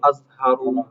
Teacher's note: ujung lidah dengan ujung gigi seri atas tapi pangkal lidahnya dinaikkan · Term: huruf za